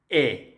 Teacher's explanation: Al pronunciar la E, verán que la lengua sube un poquito, ¿sí? Más hacia el lado del paladar, hacia arriba.